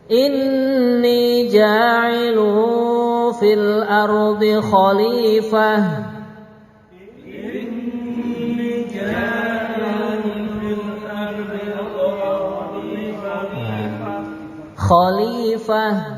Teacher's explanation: Nah itu ada tanwin ja'ilun ya. Itu tanwin setelahnya ada huruf fa. Itu kalau dalam tajwid bacaan ikhfa hakiki, mendengung lu gitu. Inni ja'ilu fil ardi khalifah.